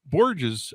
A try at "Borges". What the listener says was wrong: With an H sound, Borges.